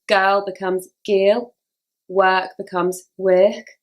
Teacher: the ER sound becomes an e